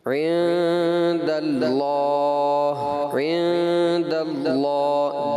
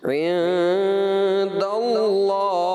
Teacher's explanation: آپ نے پڑھا جو اسم جلالت کا لام ہے نا، جب آپ نے دال کو لام سے ملایا پہلی بار میں لام آپ نے باریک پڑھا، اور جب اس کا کھڑا زبر آپ نے پڑھا تو آپ نے اس لام کو پر پڑھ دیا. جبکہ یہ اس اسم جلالت کے لام کو ابتدا ہی سے پر پڑھا جائے گا